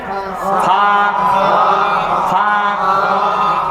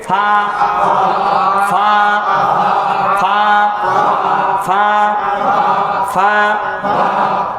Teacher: সামনে দুই দাঁত এই নিচে ঠোঁটের পেটে লাগাই দেন